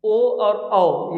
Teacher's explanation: ओ और औ ये कंठ से भी निकलते हैं और ओठ से बोला जाता है, तो इसलिए इसको हम लोग बोलते हैं कंठोष्ठ।